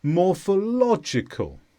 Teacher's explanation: morphological is an adjective and the stress is on law